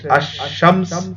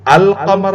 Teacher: الشمس میں آپ کو لام نہیں پڑھ رہے آپ، لیکن القمر میں لام کلیئرلی پڑھا جا رہا ہے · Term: حروف شمسیہ حروف قمریہ